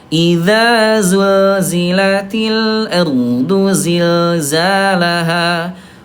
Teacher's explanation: Huruf zai dia jahar, ayah Bunda tidak ada udara, ya. Bukan pakai sin ya.